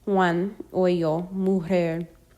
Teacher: J, English H. It can also be given a slightly guttural sound.